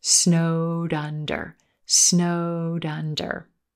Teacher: under snowed under here again we have linking that Eed ending that D D D sound is connecting in front of the word under to make it sound like Dunder